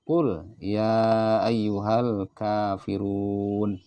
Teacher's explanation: Al-kafirun ini dibaca panjang, 2 ketukan.